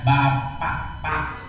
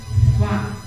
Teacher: Tapi kalau membaca Quran bahasa Arab, huruf pa itu bukan bibir dengan bibir, tapi gigi atas ketemu bibir bawah